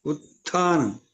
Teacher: మొదటిది అల్పప్రాణం రెండోది మహాప్రాణం